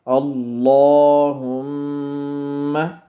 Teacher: لفظ اللہ کے لام کو پر پڑھیں، مطلب موٹا پڑھیں، اور میم پہ غنہ کریں